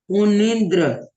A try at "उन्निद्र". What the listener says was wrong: हाँ, उन्नीद्र नहीं है, उन्नीन्द्र। पहले आपने उन्नीद्र बोला था, उन्नीन्द्र आधा ना है और पूरा ना है, ठीक है? उन्नीन्द्र। उन्नीन्द्र।